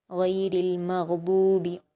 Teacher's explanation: रा पर ज़ेर है और लाम से मिलाकर पढ़ेंगे जज्म होने की वजह से, और हुरूफ कमरिया का भी कायदा है, रा को ज़ेर है तो बारीक पढ़ेंगे